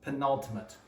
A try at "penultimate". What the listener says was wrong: I feel like you're still not saying it right. Are you rolling your tongue? Are you? There's not multiple R's in this. Penultimate.